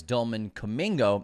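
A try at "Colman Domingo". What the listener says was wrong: You said Dolman Domingo. you mixed up the first letter.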